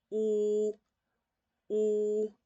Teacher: Y y la u es como si yo estuviese diciendo como si estuviese al lamentándome por algo, como sorprendiéndome por algo. Entonces la posición de los labios es un poquito más cerrada y le hago el sonido de u.